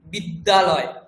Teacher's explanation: বিদ্যালয় মানে উচ্চারণ কি হয়? দুটো দকার শোনা যায়।